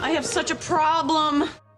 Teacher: clear first syllable stress and a very short second syllable but she's bringing a lot of stress and energy to this word problem and she really holds on to that second syllable